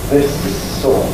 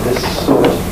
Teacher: When you've got double S, one at the end of one and the other at the beginning of the next, what we get is a single long noise. This sort. And you mustn't make the first S, finish it, this, and then start another one, sort, this sort, that sounds rather bad. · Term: double consonants